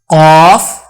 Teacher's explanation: کوے کو زبان کی جڑ لگانے سے قاف ادا ہوتا ہے